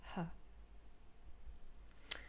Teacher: so it's a voiceless glottal fricative · the sound ha so it's voiceless we know that already and the glottis is a little bit constricted but not closed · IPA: /h/